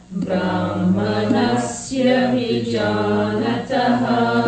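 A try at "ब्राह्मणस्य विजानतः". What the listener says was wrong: Let me hear the ha in Brahmana. Yeah, you have to pronounce all the Mahapranas.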